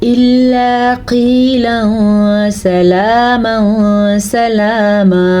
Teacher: نون تنوین کے بعد سین حروف اخفا میں سے آیا ہوا ہے تو یہاں پہ ہم نون تنوین کو چھپائیں گے حروف اخفا کی وجہ سے اور غنہ بھی کریں گے